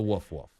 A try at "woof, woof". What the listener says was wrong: Well, and also he's almost like he's trying to pronounce the word woof instead of giving you a woof. You see what I mean? It's woof, woof. You got to go woof, woof.